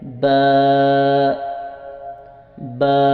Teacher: دونوں ہونٹوں کو ملانے سے با ادا ہوتا ہے، اور ہم نے اس کو تھوڑا سا لمبا کر کے ادا کرنا ہے، اور بہت ہی آسان اور سمپل طریقے سے۔